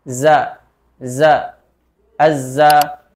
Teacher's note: ro Oke kita lanjut ke huruf berikutnya yaitu huruf z yaitu makhrajnya ujung lidah sejajar antara Gigi atas dan Gigi bawah tapi lebih lebih condong atau lebih dekat ke bawah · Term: huruf zai